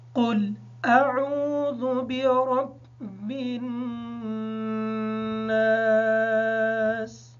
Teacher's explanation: اس آیت میں قاف کو پر پڑھیں گے، حمزہ اور عین کو واضح کر کے پڑھیں گے، اور ذال میں زا کی آواز نہ آئے، را کو پر پڑھیں گے۔ نون مشدد ہونے کی وجہ سے اس پر غنہ ہوگا، اور الف ساکن ہے، اس وجہ سے ایک الف کے بقدر اس کو لمبا کر کے پڑھیں گے، اور سین حالت وقف کی وجہ سے ساکن ہوگی۔